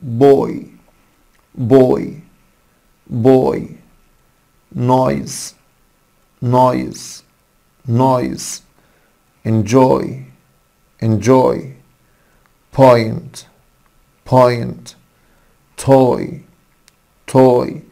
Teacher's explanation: هنا صوتين اتنين هما صوت الأ والاي، الاتنين دول بيكونوا له صوت واحد وهو اسمه اي اي. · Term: صوت الاي اي